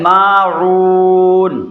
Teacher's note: یہاں پر ہے صرف حرف مد، بات سمجھ رہے ہیں؟ مد اصلی ہے، صرف ایک الف کھینچیں گے۔